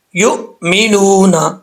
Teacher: والذین یؤمنون بما انزل، یؤمنون، تو یہ حمزہ میں جھٹکا نہیں ہو رہا، جھٹکا بھی ہو رہا ہے ساتھ ساتھ قلقلہ بھی ہو رہا ہے، تو یہ دو چیزیں نہیں ہیں۔ حمزہ میں جھٹکا تو ہے لیکن قلقلہ نہیں ہے، قلقلہ کریں گے تو غلط ہو جائے گا۔